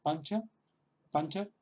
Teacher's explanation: En este caso la ñ es un poco más suave, esta ñ es un poco más suave que la ñ española